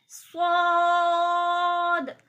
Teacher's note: اسے صاد کہتے ہیں, یہ پر یعنی کہ موٹی آواز سے پڑھا جاتا ہے